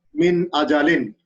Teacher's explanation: We have to read distinctly from its own makhraj without any gunna. It is called izhar. That means there is no change.